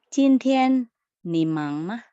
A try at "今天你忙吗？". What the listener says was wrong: 很好，发音和声调都很好呀。